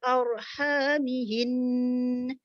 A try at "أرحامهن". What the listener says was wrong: Jangan bunyi nah tu. Arhamihin. Nah tu tak mau.